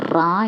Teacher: കമ്പിതം എന്ന് പറഞ്ഞാൽ നല്ല രീതിയിൽ വൈബ്രേഷൻ ഉള്ള ശബ്ദമാണ്